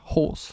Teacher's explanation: le R ne se prononce pas, donc ça va faire horse